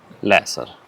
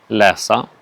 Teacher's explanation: there is a falling tone through läser, the present tense, and then a falling rising tone on läsa, the infinitive